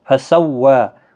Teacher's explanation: واو کے اوپر کھڑا زبر ہے، 1 الف کی مقدار کے برابر کھینچ کر پڑھیں۔